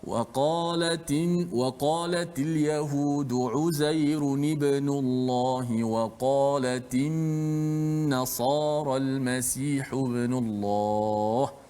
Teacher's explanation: Memang hujung lidah kita kena pada makhraj nun dan dijelaskan gunnah itu.